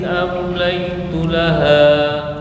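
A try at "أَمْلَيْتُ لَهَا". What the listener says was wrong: Mohon maaf, am itu idhar, jangan dengung. Bukan kelamaan, langsung amlaitu laha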